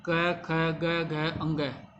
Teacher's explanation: यानी कि कंठ में अ क ख ग घ अंग और विसर्ग उच्चारण स्थान इनका कंठ होता है।